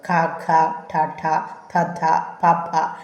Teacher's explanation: വായു പൂർണ്ണമായിട്ട് തടഞ്ഞ് പിന്നെ പൊട്ടിച്ചു തരുന്നത് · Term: അവസ്ഥിത